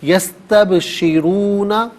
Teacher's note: را پر پیش ہے، را پر زبر یا پیش ہو تو را کو پر کر کے پڑھتے ہیں، زیر ہو تو باریک کر کے پڑھا جاتا ہے، یہاں پر کر کے پڑھیں گے یستبشرون، اور یہاں وقف پڑھیں گے تو یستبشرون پڑھیں گے۔